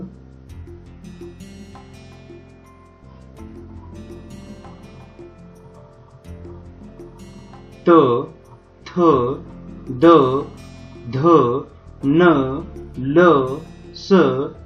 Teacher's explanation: ज्या वर्णांचा उच्चार करताना जिभेचा स्पर्श दाताच्या मागील भागास होतो त्यांना दंत्य वर्ण असे म्हणतात